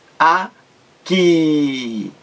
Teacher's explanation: Então, a sílaba mais forte é a última.